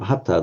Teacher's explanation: We would have expected to see past participle hanta, but no, what actually happens, it's become hatta, the nasal drops.